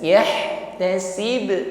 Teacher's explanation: Waqaf maka di situ qalqalah atau bunyi pantulannya nampak lebih jelas.